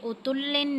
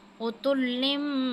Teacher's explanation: اثیم اتلم، اب یہاں پہ تنوین کے بعد با آ گیا ہے، تو جب بھی تنوین کے بعد یا نون ساکن کے بعد با آ جائے گا تو ہم تنوین کو جو ہے میم میں بدل کے پڑھیں گے